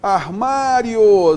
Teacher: E o ditongo crescente. Nós temos então uma semivogal mais uma vogal. O som tem que crescer.